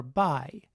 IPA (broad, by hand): baɪ